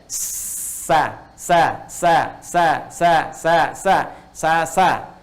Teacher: Kalau yang tadi mendekat, mau nempel, ini ke bawah. Jadi ketika dia bunyinya ke bawah tidak muncul seperti o lagi, tapi netral jadi a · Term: istifal